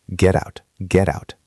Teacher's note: The t at the end of get is between two vowel sounds. The e in get and the uh in out. So it becomes a soft d sound. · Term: flap t